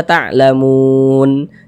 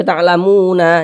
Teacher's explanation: Ini kita berhenti di huruf nun. Huruf nun tidak dibaca panjang karena berhenti atau berwakaf tepat di huruf yang tidak dibaca panjang. hurufnya itu kita sukunkan seperti itu.